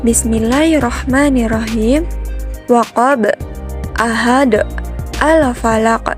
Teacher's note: Qalqalah kubra itu adalah huruf al-qalqalah yang mati karena dihentikan atau diwakafkan dengan sengaja. Letak dari huruf al-qalqalah kubra ini yaitu berada di akhir ayat. Dan cara membacanya pun dipantulkan dengan cukup berat.